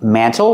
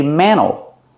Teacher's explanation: You can pronounce it mantle with a T, or you can make the T silent and say mantle. Mantle. This is a mantle.